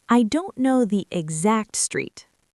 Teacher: When you say this, I want you to put the stress on the word exact. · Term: stress pattern